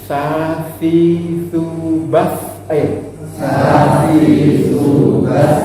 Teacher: Ujung lidah ketemu dengan gigi atas dan bawah. Tengah-tengahnya seperti agak sedikit digigit. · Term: sin